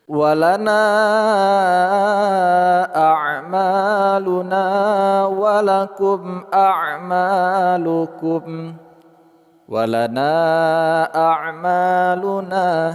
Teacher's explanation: Walana amaluna, na, kita panjangkan dua, empat atau lima harakat mad jaiz munfasil, ma, panjang dua harakat, na, panjang dua harakat.